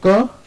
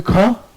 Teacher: देखिए क से ज्यादा वायु निकल रही ख में।